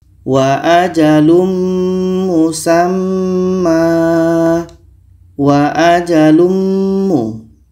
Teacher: Maka tanwin ini kita masukkan ke mim dan kita baca dengung. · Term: idgham bi gunnah